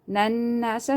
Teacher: Waw is silent, before that there is madda, so you have to stretch it. Nan nasa, noon mushaddad, you have to do gunna here.